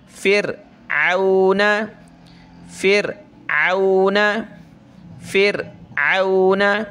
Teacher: را سے پہلے زیر ہے تو را کو پتلا کریں گے